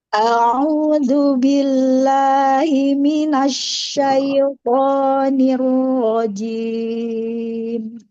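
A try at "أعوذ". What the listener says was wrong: Ahsan, lagi di hamzanya terlalu panjang. Jangan panjang. A'udzu.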